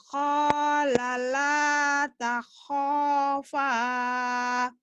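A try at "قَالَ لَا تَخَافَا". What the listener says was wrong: Bukan orang Jawa ya Bu. Kola Bu, bukan hola. Qala la takhafa.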